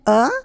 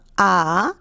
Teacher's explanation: ह्रस्व, जिसको कि बोलते समय हमें कम समय लगता है, और दीर्घ यानी कि समय ज़्यादा लगता है।